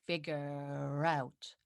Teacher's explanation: So it depends, but typically, like non-rhotic British accent would be without the strong R at the end of this word figure, but out starts with the vowel, so this R comes back. So we have to pronounce this R at the end to link it with the out.